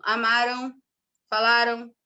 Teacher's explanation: na terminação em palavras como amaram falaram ocorrem ditongos nasais